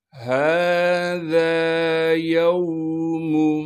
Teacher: ہا کے بعد ذال ہے جس کو ہم نرم کر کے باریک کر کے پڑھیں گے